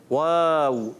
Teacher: जब होल गोल होते हैं तो दोनों ही होंगे, क्योंकि जब हम पढ़ेंगे वाव तो दोनों ही होंठ गोल होंगे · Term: दोनों होठों की गोलाई